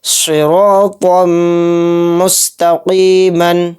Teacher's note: طا کے اوپر تنوین ہے، تنوین کے بعد میم آ رہا ہے تو اس میں ادغام میم کا قاعدہ ہو رہا ہے، یہاں پر ہم غنہ کر کے چلیں گے، صراطا مستقیما۔ اس میں یہ را کے اوپر زبر ہے تو اس را کو بھی موٹا یعنی پر پڑھیں گے